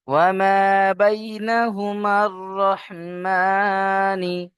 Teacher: এখানে মিম গিয়ে যুক্ত হবে রয়ের সাথে, আলিফটা বাদ যাবে।